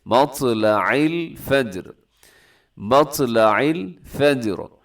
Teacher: یہاں آخر میں جو راہ ہے وہ موٹا پڑا جائے گا